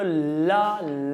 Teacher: ला जब बोलते हो तो जीभा ऊपर जाके दरवाजा कर लिया बंद और हवा निकल जाती है मुंह के बगल से, पास से, तो इसलिए इसको बोलते हैं मेरे दोस्त पार्श्विक व्यंजन बोलते हैं।